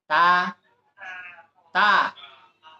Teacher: জিহ্বার আগা সামনের উপরে 2 দাঁতের গোড়া